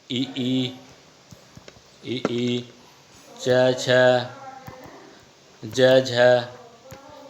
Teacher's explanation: तालव्य जो होते हैं वो क्या होते हैं? आपके तालु और जीवा के स्पर्श से बोले जाने वाले शब्द क्या कहलाते हैं? तालव्य कहलाते हैं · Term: तालव्य वर्ण